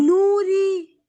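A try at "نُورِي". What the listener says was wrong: रॉ को और ज्यादा खींचिए। नूरी।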